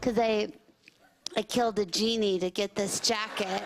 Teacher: contrasting her high-pitched baby voice with dark and twisted subject matter